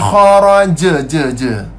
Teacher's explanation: Jim tu adalah qalqalah wusta, qalqalah sughra, qalqalah kecil.